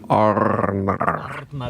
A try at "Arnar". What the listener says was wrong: Yeah, it's probably a little hard to roll the R's, right?